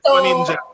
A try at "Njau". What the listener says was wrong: So my last name is Njau. So the N is silent. So it's N-J-A-U. So the N is silent.